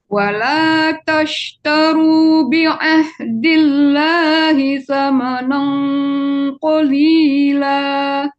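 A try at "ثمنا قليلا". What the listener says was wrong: Jangan samanang. Samanang. Jadi jangan dibulatkan mulutnya membaca nang. Samanang qalila.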